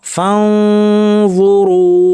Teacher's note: নুন সাকিন য ফানজুরু এখানেও আমার জিব্বাকে য এর মাখরাজ নিতে হবে, অর্থাৎ তরফুল লিসান উপর পাটি দাঁতের শীর্ষে এখানে ফাঁ কিন্তু ভারী, আওয়াজটাকে উপর ঠেলতে হবে। ফাঁ বলার সময় মাখরাজে ফুল প্রেশার দিব না, জু বলার সময় ফুল প্রেশার দিব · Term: ইখফা